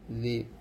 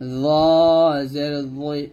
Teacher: আর এটা হবে জাল, পাতলা হবে, জাল জের জি, জি। আর এটা হবে জ, মোটো করে, এই জালের মতো করা যাবে না, জ জের জই এরকম।